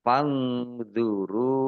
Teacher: nun sukun bertemu dengan huruf dha, bacaan ikhfa dibaca samar-samar.